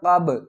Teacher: با کو ہم ہلا کر پڑھیں گے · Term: قلقلہ